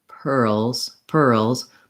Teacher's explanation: i don't want really pearls per owls with a break it has to run together